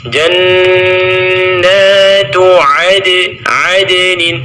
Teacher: Kemudian yang perlu diperhatikan adalah pada kalimat jannatu, nun bertasydid dibaca dengan tempo dengung kurang lebih 3 harakat. Jannatu adnin, di situ ada qalqalah pada huruf dal, qalqalah sughra karena dia berada di tengah kalimat.